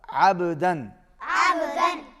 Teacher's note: عین حلق میں سے ادا ہوگا